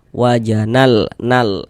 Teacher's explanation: Lamnya lam qamariah. Maksudnya dibaca izhar itu huruf lam itu dibaca dia dengan jelas. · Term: izharu qamari